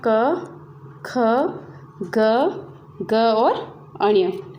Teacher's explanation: अ, आ, क वर्ग, ह और विसर्ग का उच्चारण स्थान होता है हमारा कंठ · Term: कंठव्य